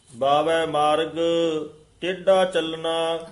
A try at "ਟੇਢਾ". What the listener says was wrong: ਇਹ ਟੇਢਾ ਡੱਡੇ ਨਾਲ ਨਹੀਂ ਬੋਲਣਾ, ਟੇਢਾ ਨਹੀਂ ਕਹਿਣਾ, ਟੇਢਾ ਢੱਡਾ ਲਾ ਕੇ ਉਚਾਰਨ ਕਰਨਾ ਹੈ। ਬਾਵੈ ਮਾਰਗ ਟੇਢਾ ਚੱਲਣਾ।